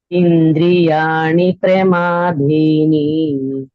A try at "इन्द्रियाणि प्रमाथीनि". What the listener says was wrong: It is not dini, it is thini. Indriyani pramathini.